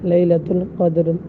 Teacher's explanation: لیلۃ القدر میں قاف کے اوپر زبر ہے تو اس لیے یہاں پر را کو کیا پڑھیں گے، باریک پڑھیں گے